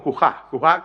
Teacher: la forma mixeña es cujada, pronunciado como cujá, cujá con aspiración